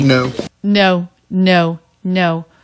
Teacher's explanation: Quick up, down shape.